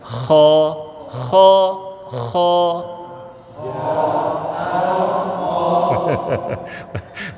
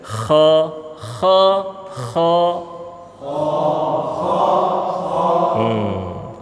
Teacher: Dia keluar dari mana? Dari ujung tenggorokan.